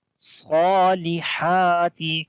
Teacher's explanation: we long ha here because this ha has also standing fatha on it, so sad and ha, these two letters we long, the other letters we do not long, so we say wa'amilus salihati falahum.